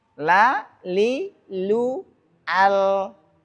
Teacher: Harus al. Jadi lidahnya nempel ke langit depan, gusi depan, al. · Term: lam